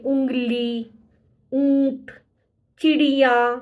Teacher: आपकी आवाज गले और नाक से एक साथ निकलेगी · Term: अनुनासिक